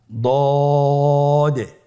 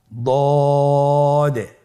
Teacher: দদের মাখরাজ জিহ্বার গোড়ার কিনারা সামনের উপরের দুই দাঁতের গোড়ার সঙ্গে লাগিয়ে উচ্চারিত হয়